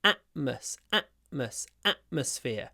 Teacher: I don't pronounce the T in atmosphere I use a glottal stopka at Atmos Atmos atmosphere and I · always do that if there is a t before a consonant so here we have m a consonant so I use glottal stop instead of T